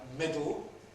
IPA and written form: ˈmɪdl̩ (middle)